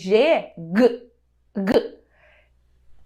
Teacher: a mão aqui na garganta e na consoante g g g a vibração pode ser sentida e parece que o som ocorre mais para fora